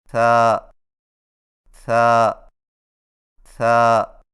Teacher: ثا کی ادائیگی میں زبان کی نوک کو ثنایا علیہ کے اندرونی کناروں سے نرمی سے لگا کر باریک آواز میں پڑھیں، یعنی ثا ثا ثا۔